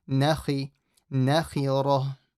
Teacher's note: The ra is heavy, kha is slightly heavy as well. So don't say nakhi, make it slightly full.